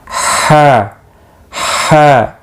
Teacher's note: गले के दरमियान से अदा होता है, और ये भी हल्की है, ये गले के इब्तिदाई हिस्से से अदा होता है।